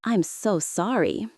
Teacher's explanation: the voice drops, soft and sincere.